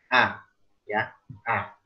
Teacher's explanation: Kalau A-nya orang Arab itu lebih ditarik ke samping seperti kita senyum.